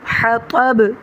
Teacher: حطب تو موٹا پڑھیں گے، با پر کلکلا کریں گے